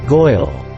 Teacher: In the most old-fashioned and extreme versions of the New York dialect, the vowel sounds of words like girl and of words like oil became a diphthong. This is often misperceived by speakers of other accents as a reversal of the and oi sounds, so that girl is pronounced goil and oil is pronounced Earl.